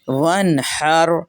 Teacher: را ساکن ہے اور اس سے پہلے زبر ہے اس لیے را کو موٹا کیا۔